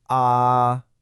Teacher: first tone is high and flat. Just hold it steady way up high in your range